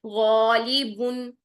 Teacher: اگر آپ غین کو موٹا کر رہے ہیں الف کو ساتھ ہی موٹا رکھیں ، غالیبن نہیں کرنا، غالیبن کریں گی یہ غلط ہو جائے